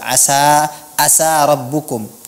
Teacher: ini kedengarannya huruf ain diganti menjadi huruf hamzah